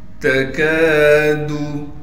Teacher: تکادو، تا کو باریک پڑھنا ہے، کاف کے بعد الف ہے، لہٰذا الف حروف مدہ میں سے ہے، اس لیے کاف کو ایک الف کی مقدار کھینچیں گے، دال کو بالکل نہیں کھینچنا ہے